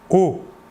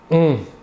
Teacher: L'air sortira entièrement par la bouche. Alors que pour le ON, l'air sortira par le nez.